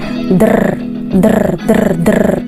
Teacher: Está el sonido detrás de los alvéolos, está el sonido R